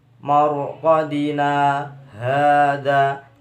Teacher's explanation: bacaan saktah artinya berhenti sejenak tanpa mengambil nafas